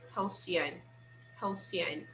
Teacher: The stress is on the first syllable, right?